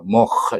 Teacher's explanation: mukh dengan berakhir dengan tebal, di hujung halqum sana